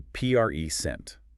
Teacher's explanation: Stress on the first syllable. It's a noun.